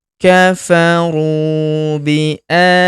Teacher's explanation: Huruf ru kita panjangkan dua harakat karena terdapat wau sukun di depannya. Alifnya tidak dibaca atau dianggap tidak ada.